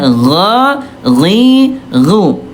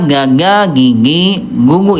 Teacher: Ekor lidah atau akar lidah ayah Bunda disentuhkan dengan lak-lakan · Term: huruf ghain